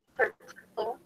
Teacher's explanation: In the first word, the stress is on the second syllable.